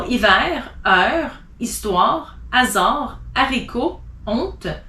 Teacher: You don't pronounce the H if it's in the beginning of a word.